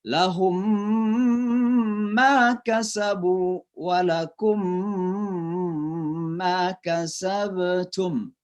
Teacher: mim yang mati itu dimasukkan ke ma. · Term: idgham mimi